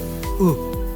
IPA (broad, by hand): ɯ